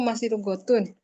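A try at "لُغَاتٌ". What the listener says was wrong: Bukan masih lughatun, memang lughatun. Lughatnya panjang. Kalau lughatun kan lughatnya tidak panjang. Lughatun.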